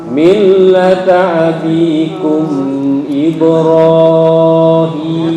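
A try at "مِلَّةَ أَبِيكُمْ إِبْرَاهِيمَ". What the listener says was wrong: Kepanjangan, ini 2 harokat aja. Oke, lam ntar dikurangi dengungnya ya. Millata abikum Ibrahim.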